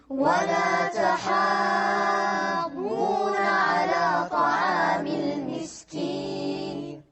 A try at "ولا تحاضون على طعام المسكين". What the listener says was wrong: لا، هذا المد أكثر، لأن مد شنو؟ مد لازم.